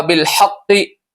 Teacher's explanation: इसी तरह यहाँ होगा बिल हक़्क़ि, यहाँ तशदीद है, तो जब तशदीद किसी हर्फ पे आती है तो उसको 2 मरतबा पढ़ा जाता है